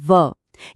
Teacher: यह पूरी वर्णमाला में इकलौती ऐसी ध्वनि है जिसको बोलने में ऊपर के दांत और नीचे का होठ दोनों एक साथ काम करते हैं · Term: दंतोष्ठ ध्वनि